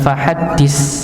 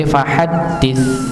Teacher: Ujung lidah bertemu dengan ujung gigi seri atas. Dis nggih, huruf ta, bukan huruf sin ya.